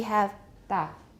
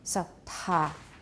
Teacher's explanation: So that one is da. For ta, we have this quite a long period of frication from the aspiration.